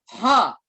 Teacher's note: Bukan di dada, tapi di tengah tenggorokan. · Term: H besar